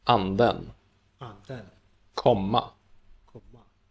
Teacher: the pitch rises in the stressed syllable, which is similar to, but quicker than in accent 1, and then it also rises again in the following unstressed syllable. · accent 1 words sound like normal words, and accent 2 words sound as if they stress the second syllable once more